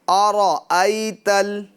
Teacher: را یہاں پر پور کریں گے یعنی موٹا پڑھیں گے